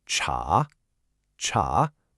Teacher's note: It's a rising tone, kind of like you're asking a question.